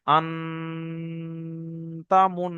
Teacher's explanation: যেমন পড়াটা দেখেন, এখানে আপনারা পড়ে দেখছেন আন বলে নুন সাকিন আছে, তাহলে নুন সাকিনটা আওয়াজটা নাকে ধরে রাখতে হবে। কেন? এই নুন সাকিনের পরে তা এসেছে, তাটি কিন্তু হরুফে হালকি নয়, কারণ আমরা জানি হরুফে হালকি 6টি, হামজা, হা, আইন, হা, গইন, খ, তার মধ্যে তা নেই। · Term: ইকফায়া হালকি